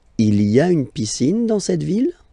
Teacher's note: don't forget to raise your voice at the end because it's a question